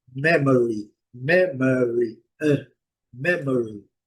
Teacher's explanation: a acentuação tônica é na primeira sílaba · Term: sílaba forte